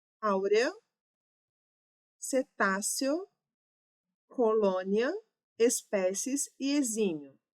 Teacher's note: que podem ser pronunciados como ditongos crescentes, som crescente, começando com uma semivogal, indo para uma vogal